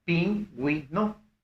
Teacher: Y la fuerza de voz recae en la wi, puesto que es pingüino.